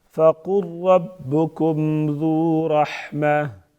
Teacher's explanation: فَقُلْ قاف پر پڑھیں گے اور را کو بھی پر پڑھیں گے.